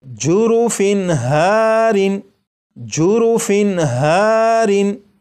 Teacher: تنوین کے بعد ہا ہے اور ہا حروف حلقی میں سے ہے، اس لیے یہ جو تنوین ہے اس کے نون ساکن کو ظاہر کر کے پڑھیں گے